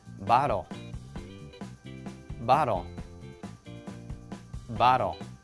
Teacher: when TL and E are all together when that happens it will make a DL sound